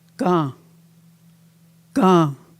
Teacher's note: At the nasal sound at the end, you don't hear the n, it's gone.